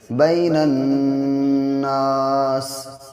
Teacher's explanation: نون پہ جب بھی تشدید ہوگی تو غنہ ہونا ہی ہونا ہے، یعنی ناک میں آواز کو ایک الف کے برابر روک کے پڑھیں گے